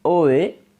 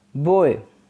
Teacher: closing diphthong is oe as in boy so in this vowel the tongue glides from half open back to half close front